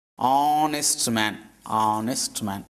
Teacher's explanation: Here starting letter is H, but it is not pronounced. H is here silent.